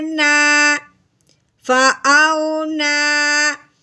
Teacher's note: کھڑی زبر کو 1 الف کے برابر لمبا کرنا ہے